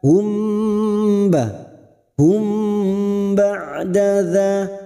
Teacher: mim sukun bertemu ba Ikhfa Syafawi mendengung selama dua atau tiga harakat